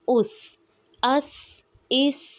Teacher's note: سین بھی حروف صفیریہ میں سے ہے، اس کو ادا کرتے ہوئے سیٹی کی آواز آئے گی